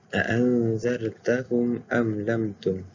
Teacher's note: hamzah ni bila disambung ataupun diberhentikan, ia akan tetap hidup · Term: hamzah qata'